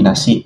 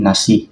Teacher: mempunyai konsonan glotal di hujung kata berbanding nasi dalam bahasa Melayu standard yang diakhiri vokal terbuka. Ini menjadikan sebutan dialek Sarawak lebih tegas dan ringkas.